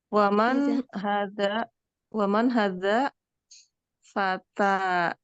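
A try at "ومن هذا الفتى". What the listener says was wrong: Baca alif lamnya. Waman hadzal.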